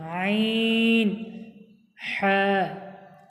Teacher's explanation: হালাকের বা কণ্ঠনালীর মাঝখান হতে উচ্চারিত হয় আইন হ্যাঁ।